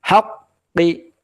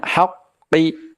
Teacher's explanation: qaf sifatnya tebal, jauhkan rahangnya.